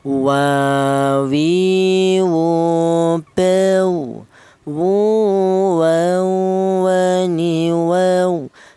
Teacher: keluarnya huruf berasal dari kedua bibir yang renggang. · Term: Huruf waw